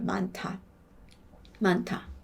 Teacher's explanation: 히읗은 하니까 그냥 기본적으로 그냥 목구멍에서 바람이 빠져나오는 소리거든요. 그러니까 히읗은 기본적으로 그냥 공기예요. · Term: 히읗의 소리